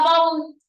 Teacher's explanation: que la palabra baú no es cualquier aguda sino que es una aguda donde la vocal cerrada está llevando la mayor fuerza de voz